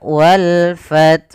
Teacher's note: alif dan lam yang kita tulis dan kita baca dengan jelas suara lamnya. Maka wal fath, karena datang setelah huruf lam yang mana itu huruf fa termasuk huruf qamariyah. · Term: alif lam qamariyah